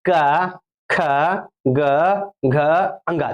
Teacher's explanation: जब बोलिए क खा तो आपका जो कंठ है ना वहां पर रगड़ होगा